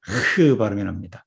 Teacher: 카프는 KH, 흐 발음이 납니다. 그래서 거의 흐에 가깝습니다. 목구멍에서 나오는 흐의 카프.